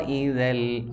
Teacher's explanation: ذال نرم حروف ہے اس وجہ سے زا کی طرح سختی کے ساتھ ہم نے اس کو نہیں پڑھنا